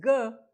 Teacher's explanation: ga is plus voice minus aspirate